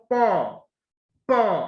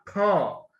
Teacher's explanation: প দিয়ে অল্প বাতাস বের হচ্ছে, সুতরাং এটাকে কি বলবো, এটাকে অল্প প্রাণ বলবো।